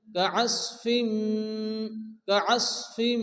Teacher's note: কাআসফিম, এখানে তানবিনের পরে মিম এসছে, তো তানবিন উচ্চারণের পরে যদি মিম আসে তো ইদগামে বা গুন্না বা ইদগামে মিম হয়, এখানে একাধিক গুণ্য করে পড়তে হবে।